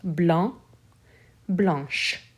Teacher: becomes blanche so it's irregular here i'm adding an h e the ch for blanche sounds like a sh whereas the c in the masculine form is completely silent